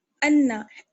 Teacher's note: یعنی جب ہم دیکھ لیں کہ نون اور میم پر تشدید ہے تو ایک الف کی برابر ہم ٹھہریں گے اور ناک میں آواز لے جائیں گے. یہ چیز جو ہے غنہ کہلاتی ہے، غنہ.